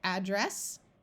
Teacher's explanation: s's together at the end of a word mean mean that the S is going to say s and not its z sound